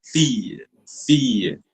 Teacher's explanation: Here, this sound will roll a little longer with a Y-ish touch. You just roll the I a bit with a Y-ish touch at the end, and you just dissolve the sound there.